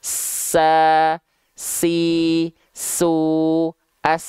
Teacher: Sin misalnya nafas dan suaranya betul-betul ngalir